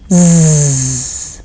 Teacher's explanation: You do the same thing, only in this case you will have the vibration of the vocal cords involved, and hence you would hear Z, which is like the buzzing of a bee. Just remember, do not bring your tongue between your teeth like you do for the and the. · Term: Z sound